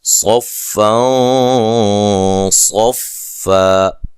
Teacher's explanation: نون تنوین کا یہاں اخفا ہے، موٹا اخفا ہے، نون تنوین، نون ساکن نون تنوین کے بعد اگر حروف مستعلیہ میں سے کوئی آ جائیں گے نا تو پھر وہاں غنہ موٹا ہوگا، موٹا ادائیگی اس کی موٹی ہوگی، اور اسی کو ہی اخفا موٹا کہا جاتا ہے۔